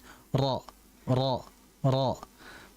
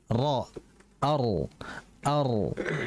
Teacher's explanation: Mengulang di sini adalah dengan adanya getaran pada huruf ra. Nah, ketika kita mengucapkan huruf ra, sekali sentuhan itu ada 2 getaran, ra. Oleh sebab itu, bagi pemirsa dan bagi semuanya juga perlu diperhatikan dalam menempelkan ra itu hanya menyentuh ya.